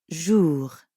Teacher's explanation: And the R at the end of jour doesn't really sound like an English R. You should feel that R in your throat. Jour. Yeah, almost like you're gargling or clearing your throat.